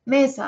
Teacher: el acento fonético de mesa está en me